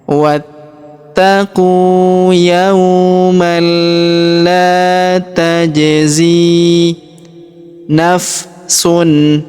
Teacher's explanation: Kemudian huruf zi kita panjangkan dua harakat karena ya sukun di depannya